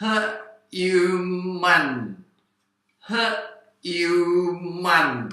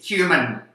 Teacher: มีควบกล้ำไม่ทางการของตัว▁hy▁ซึ่งไม่มีในภาษาไทย